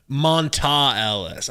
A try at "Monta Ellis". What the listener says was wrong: No. No, that's how it's spelled, but it's Monte.